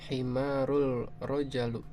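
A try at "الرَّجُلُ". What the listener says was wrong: Ar-rajulu. Iya, ar-rajulu ya, laki-laki, ar-rajulu ya, bukan rojali, bukan. Ya, rajulu. Rajul ya, rajul. Bukan rojali, rajul.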